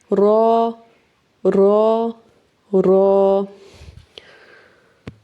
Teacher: र के लिए हम जुबान की बैक साइड इस्तेमाल करेंगे थोड़ा सा जुबान की जो नोक है उसको मोड़ के ऊपर लगाएंगे